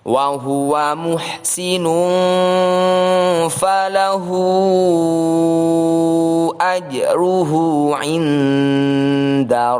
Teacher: Disebut thawilah karena huruf 'hu' ini harus dibaca panjang, 5 sampai 6 harakat. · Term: madilah thawilah